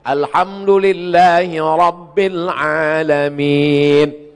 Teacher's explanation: Yang kedua, Ra-nya mesti tafkhim tebal